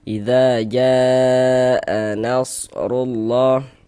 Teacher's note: Tapi di dalam satu kata, maka dia berubah menjadi mad wajib muttasil. Panjangnya mad wajib muttasil itu dibaca dengan panjang 4 sampai dengan 5 harokat.